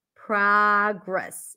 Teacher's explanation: in American English it's pronounced with the open a as in Father